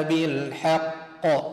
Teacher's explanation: جاء متحرك حرف القاف ولكن وقفت عليه صار ساكن أقلقله